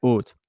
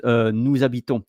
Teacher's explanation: So we don't pronounce the h.